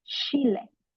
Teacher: words that contain a ch are replaced with the English sh sound.